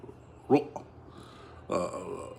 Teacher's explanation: And the third thing is if you have the letter ra, whether you pronounce it thick or thin depends on the vowel on it. If it's a fatha or dhamma, then you say the ra thick, you keep it thick, ro.